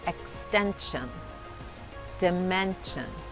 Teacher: tienes que reemplazar la SH por la CH